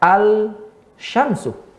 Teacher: Kemudian sya di mana? Sya di tengah lidah. Sementara lam di ujung lidah, al-syamsu. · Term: alif lam asy-syamsiyah